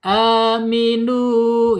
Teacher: Enggak boleh masuk ke hidung. Iya, rongga mulut saja ya. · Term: aljaub